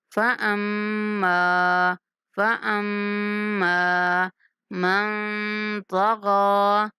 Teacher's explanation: فأما میم پر غنہ کرتے ہوئے تھوڑا کھینچ کے پڑھیں گے میم کو